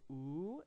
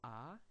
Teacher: So first you go oo, and then you go ah, and that goes wa in English. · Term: W sound